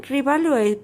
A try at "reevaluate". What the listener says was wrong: We need to hear the re. Not reevaluate. That would reevaluate.